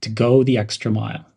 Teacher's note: link the words go and the' pronounce them as go the emphasize the word extra